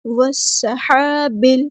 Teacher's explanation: واو کو سین کے ساتھ ملا دیں گے. حمزۃ الوصل ہمارا ڈراپ ہو جائے گا